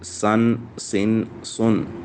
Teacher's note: सा दो ज़बर सन, सा दो ज़ेर सिन, सा दो पेश सुन, सन सिन सुन, सन सिन सुन। सीन में सीटी की आवाज़ आएगी